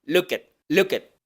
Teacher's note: esta T que viene no se va a hacer aspirada, o sea que no se va a liberar el aire después de pronunciarla, y entonces, como en las pasadas, vamos a hacer la oclusión solamente al final de la sílaba, look at, look at.